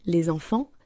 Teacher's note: La liaison fait apparaître un son Z qui n'existe pas à l'écrit.